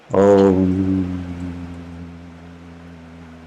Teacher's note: chant Om with more stress on the last sound, which is Ma. Om. Allow that sound to vibrate in your head. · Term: the sound of Om